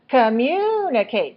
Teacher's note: Short, long, short, short.